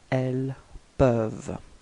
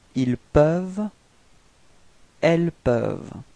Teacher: you've got this ENT at the end, but then you don't pronounce it. You only pronounce ils peuvent.